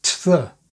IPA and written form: tə ðə (to the)